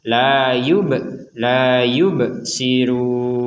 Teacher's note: Di sini ada ba sukun, kita membacanya dipantulkan.